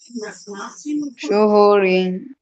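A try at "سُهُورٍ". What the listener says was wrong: এটা কি শিন না সিন? সুহু না তো সুউ। এটা আইন না মাঝখানে একটা? সুউরিন। সুউরিন।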